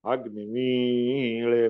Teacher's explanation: मीला वर येतं. अग्निम, अग्निम अला खाली असते